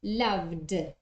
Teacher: we have a voice sound there so the pronunciation of the past form is loved with a d